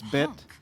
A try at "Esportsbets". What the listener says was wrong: Bets. There's an S. It's a plural.